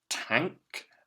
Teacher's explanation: The next word we've got tank, and can you hear that ng sound before the k at the end? It's being made with that N by itself there.